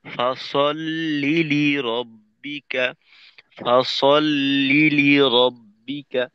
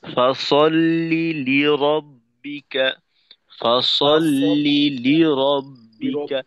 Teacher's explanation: প্রথম লামটাকে একটু শিথিল করব, আওয়াজটা একটু শিথিল করে দ্বিতীয় লামের ক্ষেত্রে আওয়াজটাকে একটু হালকা জোর লাগাবো।